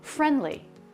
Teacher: the D comes after an N before a consonant. Very common to drop that D.